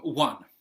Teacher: the first sound that you can hear in one is actually more of a w sound like the letter W but there's no W in the word